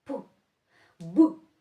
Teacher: і дзвінкий без голосу стане глухим і називатиметься глухим. Дивіться, якщо я беру дзвінкий б і говорю його без голосу, без домішок, то тоді у мене буде п.